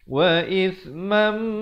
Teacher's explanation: di sini tanwin bertemu mim, idgham bi gunnah